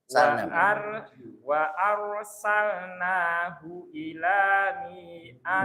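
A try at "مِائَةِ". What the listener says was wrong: Mi-nya pendek, Pak. Kalau nggak ada ya-nya pendek. Mi'a biasa. Ila mi'ati. Jadi alif di situ nggak berfungsi, Pak.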